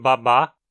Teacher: o som do a aberto em português como em babá que se trata de uma vogal Central aberta não arredondada